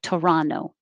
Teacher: hear it without the t at the end like toronto because when the t comes after the n and the unstressed syllable you can drop it